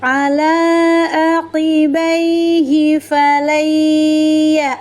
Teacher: Harfulin itu berada di tengah ayat. Cara membacanya cukup dilembutkan dan dilunakkan suara. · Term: huruf lin